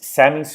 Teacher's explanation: It ends in a vowel, which means that it is automatically lenis, and we'll take the z noise.